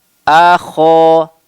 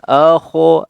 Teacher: Coba a kho, a kho. A-nya tipis, suaranya dibuka, infitah mulutnya, ya, kho-nya ditebalkan